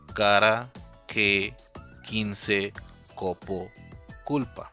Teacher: Spanish K, voiceless, velar, stop, unaspirated